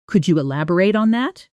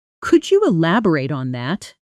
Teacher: The rising version sounds genuinely curious and open. The flatter version can sound slightly more like an instruction or even mild impatience, depending on context. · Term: rising intonation